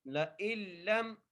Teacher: یہ نون کو نہیں پڑھیں گے، ٹھیک ہے، نون کو سکپ کر دینا ہے